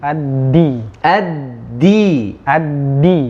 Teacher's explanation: Huruf dal keluar dari mana? Di ujung lidah bertemu dengan gusi gigi seri atas.